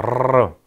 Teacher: 트릴이라고 해서 막았다가 터뜨렸다를 2회 이상 반복하는 거. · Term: 전동음